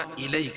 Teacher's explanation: اور یا ساکنہ سے پہلے، یا ساکن سے پہلے کیا ہے؟ زبر ہو تو یا لین ہوتا، اس کو نرم آواز کے ساتھ جلدی ادا کریں گے